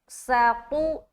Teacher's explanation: ساقو، سین زبر سا، تو پیش، تو، ساقو، تو کو موٹا رکھ رہے اور معروف بھی رکھنا کیونکہ پیش ہے